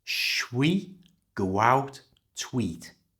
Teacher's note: to eat was also said with a little w sound, and it became tweet